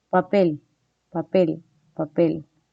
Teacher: no hay una vibración es sorda